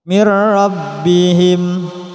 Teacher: Seperti yang barusan dijelaskan, apabila ada nun mati atau tanwin bertemu lam, diidghamkan, dimasukkan suaranya nun tersebut atau tanwin pada ro atau lam, namun tidak disertai dengung.